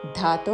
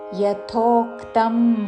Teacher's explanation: యా పక్కన మహాప్రాణాక్షము థ యథో అని ధాతో పలకకూడదు